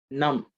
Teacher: the cerebral nasal sound so the tongue has to be bent and pointed up